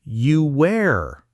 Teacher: The word are starts with an a sound. To get from ooh to a, your lips naturally make a little w sound. So you are becomes you wear. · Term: intrusive sound